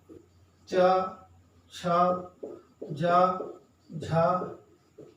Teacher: च वर्ग जो है इसको स्पर्श संघर्षी भी कहा जाता है